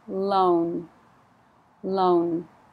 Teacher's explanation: So be very careful to put the N on the end, because if you don't, it sounds like low, like high, low.